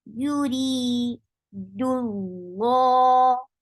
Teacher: Dal is light. Keep dal light and make the lam of Allah subhanahu wa ta'ala's name heavy.